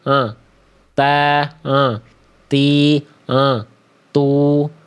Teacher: Jadi nempelnya ke situ, ke tempat tumbuhnya gigi sari atas kita. Ya, jadi ujung lidah kita ternyata nggak melet-melet keluar, nggak nongol, nggak menjulur ke ujung lidahnya keluar mulut. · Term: huruf ta